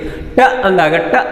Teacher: Tip and RIMS of the tongue touch the ಆಲ್ವಿಯೋಲರ್ ರಿಜ್ · ನನ್ನ ನಾಲಿಗೆ ನೋಡಿ, ಆ ಏರ್ ಪ್ರೆಷರ್ ಹಿಂದ್ಗಡೆ ಬ್ಲಾಕ್ ಆಗಿ ಕಂಪ್ಲೀಟ್ ಕ್ಲೋಸ್ ಆಗಿ when the tongue is removed, ನೋಡಿ ಟ ಅಂದಾಗ ರಿಲೀಸ್ ಆಗ್ತಕ್ಕಂಥದ್ದು. So from the alveolar ridge air is released explosively